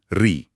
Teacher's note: और एक थोड़ा अलग स्वर है ऋ। इसकी ध्वनि मूर्धा से आती है।